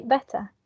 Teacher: when we have the word better in a non-rhotic accent we say better we don't pronounce the final r sound